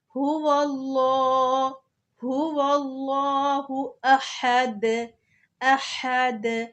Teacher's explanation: ہا کو حلق کے درمیان سے نکال کے اینڈ پہ جو دال آ رہا ہے وہاں پہ رکتے ہوئے قلقلہ بھی کریں گے۔ قلقلہ میں آواز ٹکر کھا کر واپس آتی ہے۔